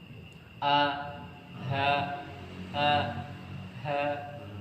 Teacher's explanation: untuk H itu keluar dari pangkal tenggorokan atau tenggorokan paling bawah semakhraj dengan huruf hamzah a ha a ha iya semakhraj dengan